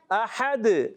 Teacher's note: हा हलक के दरमियानी हिस्से पे जोर देंगे